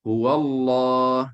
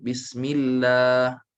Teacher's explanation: lam ismul jalalah yang tafkhim tebal, kita akan nampak pangkal lidah menaik ke langit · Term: lam yang tebal